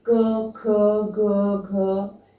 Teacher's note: हमारे कंठ से निकल रहा है, इसीलिए इसको हम कहते हैं कि इसका उच्चारण स्थान कंठ है